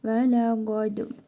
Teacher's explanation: Bu qaf hərfi qa. Dəl hərfinin üzərində cəzm var. Qalqala edərək oxuyuruq.